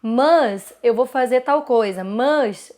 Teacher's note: Então é um A mais nasalizado